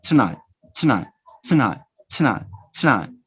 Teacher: you can omit the vowel which is unstressed. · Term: elision